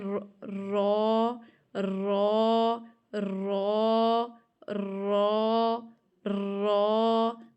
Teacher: Simple بس تھوڑا سا ہوتی ہے تکرار کے صفت، کہ آپ کی زبان نا ایک جگہ کھڑی نہیں رہتی بلکہ ایسے وائبریٹ کرتی ہے تھوڑی سی · تھوڑی سی بس تکرار کرنی ہے تھوڑی سی تکرار اس کے اندر ہوتی ہے اور موٹا پڑھنا ہے آپ نے اس کو، اور اپنی زبان کی جو پشت ہے، جو بیک ہے، وہ آپ نے سامنے کے جو 4 ثنایا اور رباعی کے دانت ہیں ان کی جڑ کے ساتھ لگانی ہے اندر کی طرف، ٹھیک ہے؟